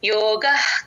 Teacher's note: యోగ పక్కన విసర్గ హెచ్ అవుతుంది విసర్గని సగమే పలుకుతాం